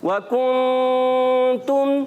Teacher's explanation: ज़बान को थोड़ा सा मखरज में लगाना होता है, थोड़ा सा, और फिर नाक में आवाज़ ले जानी होती है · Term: गुन्ना